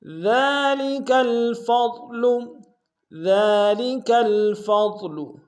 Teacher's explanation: ذالک الفضل، ذالک الفضل، ذال کے اوپر کھڑا زبر ہے، ایک امتداد میں کھینچیں گے، کاف کو لام کے سامنے آئیں گے، فا کو ضاد کے سامنے آئیں گے، ضاد کو موٹا ادا کریں گے